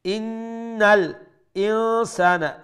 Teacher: নুন মুশাদ্দাদ ওয়াজিব গুন্না আকমাল গুন্না